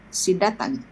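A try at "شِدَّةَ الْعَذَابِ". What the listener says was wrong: Tanpa tanwin syiddata azabi.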